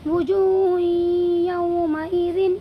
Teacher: یہاں پر بھی دو پیش کی تنوین کے بعد یہ یا آیا ہوا ہے، اسی لیے اس میں ادغام ناقص ہوگا اور تنوین کی آواز کو یا میں بدل دیں گے اور غنہ کے ساتھ یعنی ادغام کریں گے اس میں